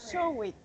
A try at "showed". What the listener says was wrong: It's just one syllable. So it's showed. Showed. Just put the D sound.